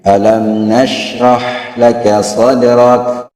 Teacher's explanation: mim lebih pendek daripada shin. Kalimat sukun tadi alam lebih pendek daripada sya.